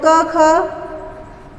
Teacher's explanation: उच्चारण करते समय अपेक्षाकृत स्वर तंत्रियों में कम झंकार उत्पन्न होता है तो वो अघोष है